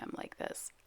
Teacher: I have a lot of vocal fry going on today.